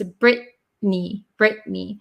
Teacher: the vowel sound and the n Sound cancel out the T